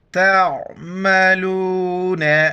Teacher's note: عین کو گلے سے ادا کرنا ہے